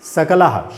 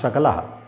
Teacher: दंत्य सा की जगह पर अगर तालव्य सा लगा दो, शकल हो जाएगा